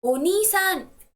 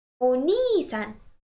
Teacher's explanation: make sure that you stress the syllable ni